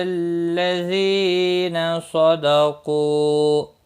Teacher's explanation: क़ाफ़ मुस्तालिया है, पुर पढ़ा जाएगा